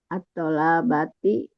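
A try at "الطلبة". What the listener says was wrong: atolabati nggak ada Bu. Atolabati nggak ada. Atolabati. Nggak ada. Toknya nggak panjang kalau itu. iya betul.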